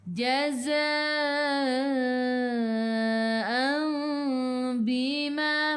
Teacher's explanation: Mim kecil ekor ke bawah iqlab dengung 2 harakat. Nak rapatkan bibir boleh, jangan tekan. Kalau nak dengarkan bibir seolah-olah ada selai kertas di tengah-tengah.